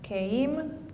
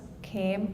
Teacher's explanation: Keim, two vowels, came, only one vowel. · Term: monophthongization